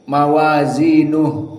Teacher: Perhatian juga domir ha di sini, mawazinuh. Ha as-sakinah. Termasuk hams juga. Jadi haknya dikeluarkan nafasnya.